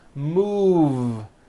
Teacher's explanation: Move has that voiced V sound.